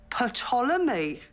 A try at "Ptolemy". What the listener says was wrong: I don't think so. The P is silent, as in psychopath. But it's from the ancient Greek. They had silent P's.